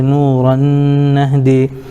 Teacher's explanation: را کے اوپر دو زبر کی تنوین ہے, تنوین کے بعد حروف یومن میں سے نون آ رہا ہے اس لیے ادغام یرملون مع الغنہ ہوگا